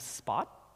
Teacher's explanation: if you have spot, that T is actually never opened back up.